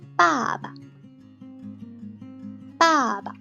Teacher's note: And second one, without tone, it's the neutral one, so it's much more lighter and shorter